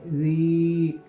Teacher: ज़ॉल soft letter है, इसको हम बारीकी पढ़ेंगे। या मद है इसलिए हम एक अलिफ के बराबर खींच के पढ़ेंगे।